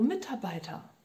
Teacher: Com palavras compostas, a ênfase, a tônica passa a ser no bei. Mitarbeiter, não mais no A, né?